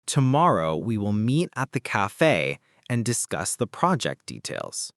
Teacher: The stressed words are tomorrow, meet, cafe, discuss, project details.